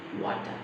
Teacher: Again, R is silent there.